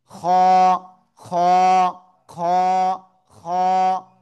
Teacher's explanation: উপরে একটা নুক্তা থাকলে খ। গলার শেষ ভাগ থেকে অক্ষরটা উচ্চারণ হবে।